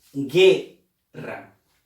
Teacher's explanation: la U no ha sonado. Por lo tanto, aquí no creas tú que hay un diptongo. No lo hay. Porque solamente suena la E.